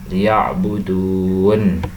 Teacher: Pada contoh yang terakhir tadi yaitu waw sukun setelah dhammah, maka itu dibaca mat tabi'i dengan panjang 2 harakat, liya'budun, seperti itu.